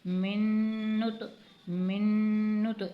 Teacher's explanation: میم نون زیر من، نون تو پیش نت، من نت، من نت۔ اس میم کو اس نون میں داخل کر کے غنہ کے ساتھ پڑھا جائے گا